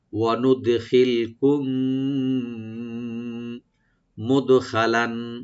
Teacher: ওয়ানুদখিলকুম মিম সাকিনের পরে যেহেতু মিম আসছে, এখানে ইদগাম সাফাবি হবে, yani মিমের সাথে মিম মিলে গুণনা সহকারে আমরা পড়ব।